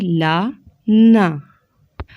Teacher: زبان کا کنارہ اوپر والے دانتوں کے مسوڑے سے لگائیں گے، تو اس سے ہم ادا کریں گے لام اور نون۔ آپ تصویر میں دیکھ سکتے ہیں، زبان کا کنارہ اوپر والے دانتوں کے مسوڑوں سے لگنا ہے، اس سے ہم لام اور نون ادا کریں گے۔